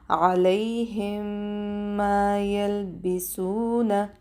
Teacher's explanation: دلته ادغام شفوي به کوو ادا کوو، 2 سکنډه وخت ورکوو. میم به بیا موږ 2 حرکت کشو، حروف مده دي.